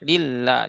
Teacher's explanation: Karena dia tarkik ya dibacanya lafaz Allahnya lilla. Jadi dibaca tipis dan tasyidnya itu ditekan ya